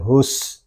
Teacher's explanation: سین یہ حروف صفیریہ میں سے بھی ہے اور اس میں سیٹی کی آواز بھی آئے گی